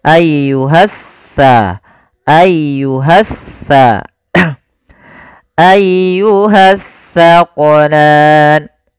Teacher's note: Alif lam yang dia tertulis tapi tidak dibaca lamnya sehingga langsung diidghamkan ke huruf setelahnya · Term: alif lam syamsiyah